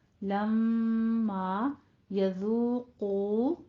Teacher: قوف کو بھی پر پڑھیں گے، دونوں ہونٹوں کو گول کیجئے